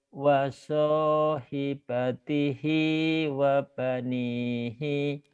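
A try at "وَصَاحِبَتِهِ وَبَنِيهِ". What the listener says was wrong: Hinya pendek ya. Hinya pendek. Wasahibatihi wabanihi.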